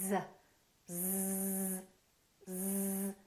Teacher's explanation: Do you feel a vibration on your vocal cords? You do. That's because Z is a voiced sound. We're using our vocal cords.